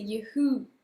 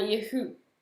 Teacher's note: l'accent il est sur la deuxième et il faut bien prononcer le H